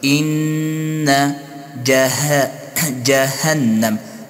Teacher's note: نون مشدد است با اندازه یک الف غنه می شود. إن جهنم ها شفاف واضح أدا شوت از مخرج خود كمخرج حرف ها أقصى الحلق مي وشا.